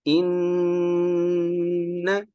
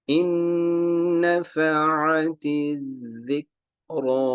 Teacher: ان, غنہ, نون میم کے اوپر small W, شد آئے گی تو آواز ناک میں لے جائیں گے, اسے غنہ بولتے ہیں